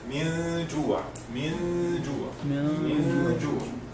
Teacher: we remove the noon or Nun al-Sakina or Tanween, and we make ghunna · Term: ikhfa